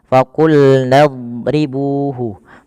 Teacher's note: huruf dot itu kan makhrajnya sisi lidah kita bertemu dengan gigi geraham atas. Maka dan pangkal lidah kita angkat.